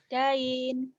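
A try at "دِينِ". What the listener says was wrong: Dini, din. Kenapa jadi dain? Dini, din. Iya, baca apa adanya terus hentikan. nggak ada yang panjang kan? Kalau yang pertama jadi mad ari disukun, dini din.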